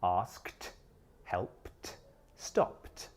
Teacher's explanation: Well, it's based on the last sound of the infinitive verb, either voiced, unvoiced, or other. Verbs which finish in an unvoiced sound, like ask, help, and stop, take the unvoiced t sound.